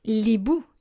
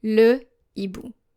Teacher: you will keep articles such as le and la intact before an aspirated H.